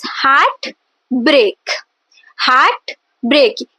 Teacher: So spondy is the two stressed syllable. So heart break, there are two stressed syllable only.